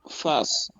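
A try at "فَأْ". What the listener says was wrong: Non, pas face. Pas face. On fait une petite pause. Fas.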